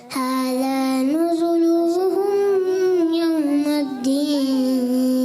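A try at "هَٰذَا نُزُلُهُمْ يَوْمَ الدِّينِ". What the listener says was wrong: नुज़ुलू थोड़ा खींचे नहीं, खींचना नहीं अरकात को, आप खुद ही तो बताते हैं बगैर खींचे बगैर झटका दे, आप खेने। हाज़ा नुज़ुलुहुम यौमद्दीन। नुज़ू सा की भी अदायगी।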